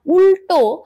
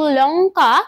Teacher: এখানে ল মূর্ধায় উচ্চারিত হচ্ছে, অর্থাৎ এখানে যে লটা উচ্চারণ করছি সেটা মূর্ধন্য ল